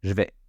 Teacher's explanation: j'ai aussi fait tomber le E de je le pronom personnel